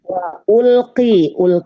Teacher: alif lam qamariyah alif lamnya dibaca jelas